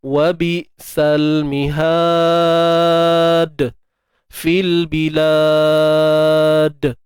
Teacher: hujung ni ada qalqalah kubra, lantunan yang besarlah